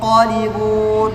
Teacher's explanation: Di sini ada ikhfa pada huruf isti'la, maka dibaca tebal dengungnya. Yang qalibun, enggak boleh tipis.